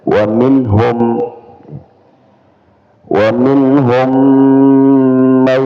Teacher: Jadi bukan sekedar memasukkan mim ke mim ya, tapi ada dengungannya. Mim sukun ketemu mim ya, dengungannya dua harakat